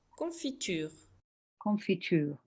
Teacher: You see how long the tur is at the end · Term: extra lengthening